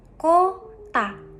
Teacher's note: Menggunakan o lemah pada suku kata ko karena berada pada suku tertutup.